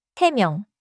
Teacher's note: The counter form is 세 and 명 begins with a soft nasal 미음.